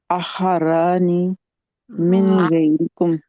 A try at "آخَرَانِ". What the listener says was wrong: ابھی بھی کیونکہ آپ نہیں لمبا کرتے، آخرانی،